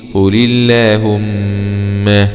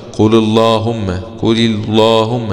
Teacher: لا بنرقق اللام بسبب انها جاءت بعد حرف مكسور